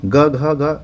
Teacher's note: ग घ घ ये कंठव्य है